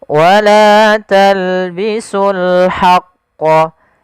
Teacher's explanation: Di sini alif lam qamariyah, yaitu alif lam kita tulis dan kita baca dengan jelas suara lamnya